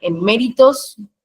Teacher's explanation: En méritos se carga la voz en me